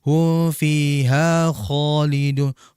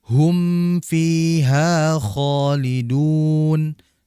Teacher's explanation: Begitupun kalau mim mati berjumpa huruf fa, hum fiha khalidun. Jangan sampai kita meleburkan atau menghilangkan mim menjadi hu fiha khalidun.